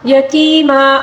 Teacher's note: یا ساکن سے پہلے والے حرف کے نیچے زیر ہے، اس کو یا مدہ کہا جاتا ہے، اس کو ہم نے ایک الف کے برابر کھینچ کر پڑھنا ہوگا